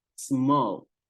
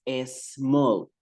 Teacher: decir pequeño digo no more aquí Ocurre algo Con la s cuando nosotros somos hispanohablantes tendemos a ponerle una e donde No la hay